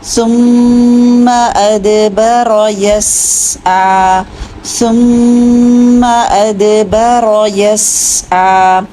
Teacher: ثم ادبر، ادبر دال میں قلقلہ کیجیے، رو موٹا کیجیے، ادبر یسعی، یس سین کے آواز کو جلدی نہیں چھوڑنا، آئین کو کلیئر کیجیے، اور یس یہ دو حرکت پہ روک دیجیے آواز کو، ٹھیک ہے، اتنا لمبا نہیں کرنا کھڑا زبر کو، بس دو حرکت ہی پڑھنا ہے